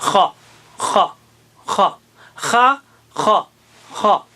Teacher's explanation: خا ہوگا، اور یہ خا بھی اونچا لفظ ہے، خا نہیں، خا خا خا، منہ گول نہیں کرنا، خوا نہیں کرنا ہے، زبان جو ہے ذرا اونچی کرنا ہے